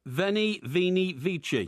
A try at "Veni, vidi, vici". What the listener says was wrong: That's wrong. It's Veni, Vidi, Vici. It's not Vini.